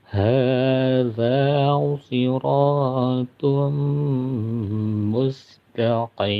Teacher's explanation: Jadi tanwinnya dileburkan ke dalam huruf mim, dipanjangkan 2 harokat. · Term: idgham bigunah